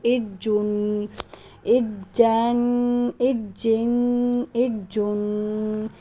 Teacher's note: اس کو ایک دفعہ پچھلے حرف سے ملا کر پڑھا جاتا ہے، دوسری دفعہ خود اس کو پڑھا جاتا ہے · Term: تشدید